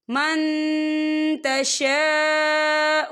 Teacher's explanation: یہ دیکھیے من، یہاں نون ساکن ہے، نون ساکن کے بعد تا آ رہا ہے، اور تا جو ہے اکفا کا ورڈ ہے تو ہم یہاں اکفا کریں گے، نون ساکن کی آواز کو ناک میں چھپائیں گے، اور تشا خالص سے پہلے زبر ہے اور اس پر مد بھی ہے تو ہم اسے 4 حرکت کے برابر کھینچ کے پڑھیں گے